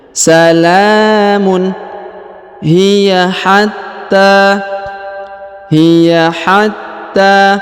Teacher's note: huruf ta dipanjangkan dua harakat karena pertama ditahan dan ditekan lalu dipanjangkan dua harakat karena yang pertama terdapat tanda tasdid yang kedua terdapat tanda Alif